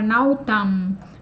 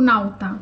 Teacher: uma das mudanças que ocorreu de forma generalizada nos substantivos foi essa apócope do M final. Então, essa palavra nautam vai ser pronunciada como nauta, como a gente vê aqui.